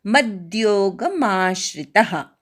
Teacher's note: मद्योगमधल्या मवर आघात मा पूर्ण म्हणायचा